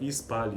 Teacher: na prática vai ocorrer uma vogal antes. Então nós vamos sempre pronunciar ispali, né?